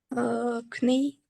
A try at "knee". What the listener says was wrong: Yes, but when you pronounce this word, you don't say the first letter K, you just say knee, knee. So here is a silent letter.